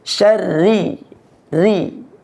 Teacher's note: Pembacaan huruf ra-nya itu ditipiskan, bukan syarri, tapi syarri, ri, tipis.